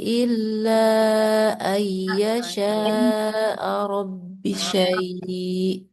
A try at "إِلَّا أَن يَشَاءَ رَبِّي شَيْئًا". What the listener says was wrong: Rabbi panjang ya, dua harkat. Rabbi syai'a.